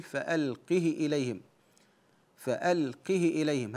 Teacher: والاختلاس معناه عدم الصله كسر الهاء لكن من غير صله تقول فالقه اليه فالقه اليهم هذا يسمى الاختلاس وبه قرا بعض